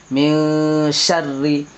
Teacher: نون کی آواز کو ناک میں چھپا کر پڑھنا چاہیے تو یہاں اخفا ہوگا اس لیے اخفا کر کے پڑھیے گا